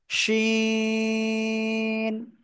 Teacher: সা শব্দ করে উচ্চারণ করতে হয়, জিহ্বার মধ্যখান উপরে তালুর সাথে লাগিয়ে